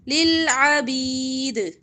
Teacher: دال پر جب وقف کریں گے تو زیر نہیں پڑیں گے کلکلا ہوگا